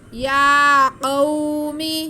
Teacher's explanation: یا پہ کھڑا زبر جو کہ الف مدہ کے قائم مقام ہے، اس لیے ہم یا کو ایک الف کے برابر کھینچیں گے